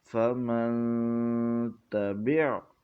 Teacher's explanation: یہاں پر نون ساکن کے بعد حروف اخفاء میں سے تا آیا ہے تو اس لیے یہاں پر غنہ کر کے پڑھا ہے